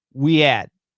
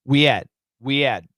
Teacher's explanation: Very common words, and almost always the H is silent. Silence. There's no H.